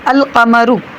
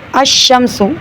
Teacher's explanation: لام کا تلفظ القمر، تو القمر میں ال جو ہے لام پڑھنے میں آ رہا ہے، شمس میں لام پڑھنے میں نہیں آ رہا